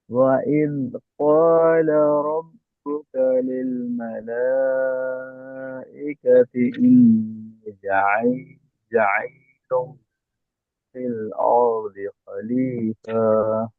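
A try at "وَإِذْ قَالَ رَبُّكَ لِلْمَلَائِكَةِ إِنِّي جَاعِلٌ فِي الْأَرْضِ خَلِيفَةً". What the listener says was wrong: এমনিটা টান হয়নি, যাটা টান হয়নি।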